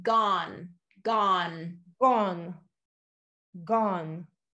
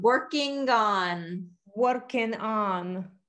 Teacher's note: we're gonna bring it back to the back of the throat with that g